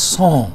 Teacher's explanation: this one is pronounced with nasalized sound as son